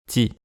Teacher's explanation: changer la position de la langue du T en le prononçant plus près du palais pour se préparer à prononcer le I qui suit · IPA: [tʲi]